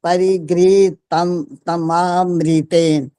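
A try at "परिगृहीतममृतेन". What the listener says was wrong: तम तम तम ऐसे थोड़ी चलेगा, पूरा एक बार में ठीक बोलो। लेकिन परिगृहीत तममृतेन, कितना स्पष्ट बोल रहा हूँ, परिगृहीत तम, मैं पूरा बोल रहा हूँ कि नहीं? परिगृहीत तम मृतेन, तम, तम में देखो ना।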